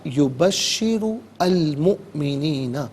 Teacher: یبشر میں را پر پیش ہے تو را کو پر کر کے پڑھیں گے